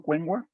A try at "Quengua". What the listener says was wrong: Quengua, profesor. Con Q.